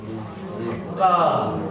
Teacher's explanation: the sound is created when the tongue touches the base of the mouth, which is here, try making that sound.